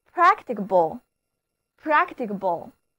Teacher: 字母▁A▁读梅花音，而两个字母▁C▁都发清辅音▁k